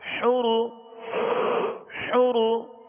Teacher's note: را کو پر پڑھیں گے، را پر پیش ہے